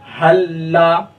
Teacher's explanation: لام کو لام میں ہم نے مدغم کر دیا، ادغام کر دیا، ملا دیا، تو یہ لام میں تشدید ہو گیا، اسی وجہ سے ہم اس کو کیا پڑھیں گے، حلا، تو پہلے والے لام کو نہیں پڑھیں گے، دوسرے والے لام کو پڑھیں گے۔ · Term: ادغام متماثلین